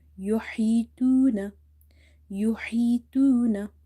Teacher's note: Okay, before waw sakin you have dama. So here waw is madda. We will read it by stretching it up to one alif.